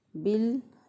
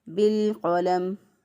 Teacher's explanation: लाम पे आवाज़ को बंद करना है और फिर उसके बाद क़ाफ को अदा करना है